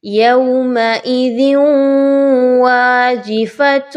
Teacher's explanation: ذال کے نیچے دو زیر کی تنوین کے بعد واو کا حرف آ رہا ہے. یہ بھی حروف یرملون میں سے ہی ہے. ادغام مع الغنہ ہے.